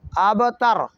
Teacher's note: با کو ہم نے ہلکی سی حرکت دینی ہے، اسے کہتے ہیں حرکت کا آدھا حصہ · با پر چونکہ با ساکن ہے، با پر زبر زیر پیش نہیں ہے، تو لہذا با کو تھوڑا سا ہلا کے پڑھیں گے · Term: قلقلہ